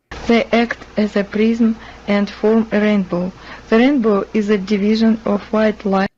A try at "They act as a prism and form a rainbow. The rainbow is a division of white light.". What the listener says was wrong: Okay, so division and then earlier prism. It sounded like she was pronouncing both of those with an E instead of an I. So English has more vowels.